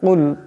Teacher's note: এখানে বড় কাফ আছে, আওয়াজটা গলা থেকে আনতে হবে